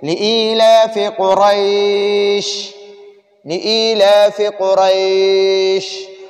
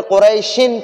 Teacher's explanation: قریش تنوین ہے، لیکن ادھر ہم آیت پر وقف کرتے ہیں، ٹھہرتے ہیں، تو ٹھہرنے کی وجہ سے یہ شین ساکن ہو جاتا ہے، پھر اس پر ہم تنوین نہیں پڑھیں گے